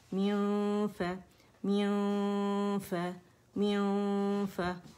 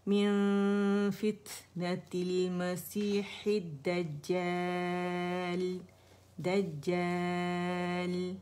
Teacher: پہ ہم اخفا کریں کیسے، میوں فا میوں فا میوں فا، غنہ اور حرف اخفا کے پہلے قریب جائیں گے لیکن غنہ ریٹین کرتے ہوئے جائیں گے اور ٹچ نہیں کریں گے فا کو